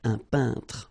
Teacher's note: you pronounce this un sound. So nasal in your nose, un peintre.